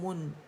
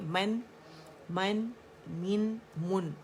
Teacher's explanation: ٹھیک ہے, من نہیں کریں گے, ہاف رولنگ بھی نہیں ہوگی. اور میم کے لیے ہم نے گولائی تو لانی ہے, لیکن نون پہ ہمارے جو ہے گولائی ختم ہو جائے گی